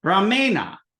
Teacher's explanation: So ram or rama, when it becomes instrumental by rama, becomes ramena. So the ending is that dental na, but because there's that ra in there, it becomes retroflex.